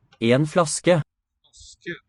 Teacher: It's not the usual low-high combo, but two falling tones to my ear.